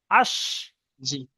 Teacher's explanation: ই- তারপরে শিনটা উচ্চারণ করলে হামজা শিন জবর আশ, আশ, একটা ইয়ের মতো সিটির মতন আওয়াজ হবে।